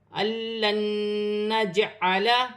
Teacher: جیم حرف قلقلہ میں سے ہے، جیم میں قلقلہ پیدا ہوگا